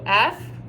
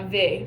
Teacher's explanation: they are the same sound so the only difference is voicing so F now V the difference is that your vocal folds